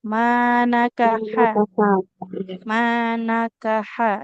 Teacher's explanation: dia huruf nun kemudian h-nya jangan dipanjangkan